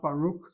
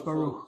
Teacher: I'm giving it a K sound. I'm giving it a continuing K sound. I'm not giving it a K that's plosive. Why so? A bigger careful letter following a vowel, a half vowel, any vowel would never be plosive.